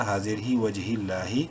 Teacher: لام کو بولڈ نہیں کرنا لیکن لمبا ضرور کریں گے ایک الف کے برابر کھڑی زبر کی وجہ سے